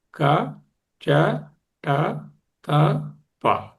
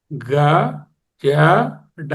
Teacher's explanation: అంటే అఘోషవర్ణాలకు కంపనం ఉండదు, ఘోషవర్ణాలకు కంపనం ఉంటుంది.